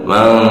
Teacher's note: Hukum bacaannya adalah ihfa. Jadi disamarkan ya, mendengung.